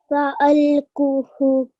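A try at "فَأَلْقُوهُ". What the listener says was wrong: So remember the 2-second rule. You need to extend 2 seconds here. So try again.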